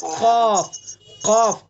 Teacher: زبان کی جڑ اور اس کے مقابل اوپر کا تالو، یہ قاف کا مخرج